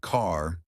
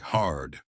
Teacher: The secret R sound. Unlike British English, Americans stretch their R sounds.